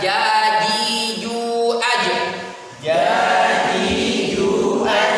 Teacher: Ingat tidak tergesek dengan gigi. Jangan dibunyikan ca. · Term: huruf jim